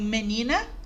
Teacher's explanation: se a sílaba tônica foi a penúltima como em menina eu terei uma paroxítona